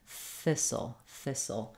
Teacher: we have a voiceless no vibration here for the start of this word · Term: voiceless th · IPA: /θɪsl/